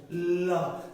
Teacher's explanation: দেখেন আপনার জিহ্বাটা সামনের দিকে একটা বেড়া করে রেখেছে, সামনে বাধা দিচ্ছে। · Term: পার্শ্বিক